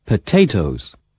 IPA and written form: pəˈteɪtəʊz (potatoes)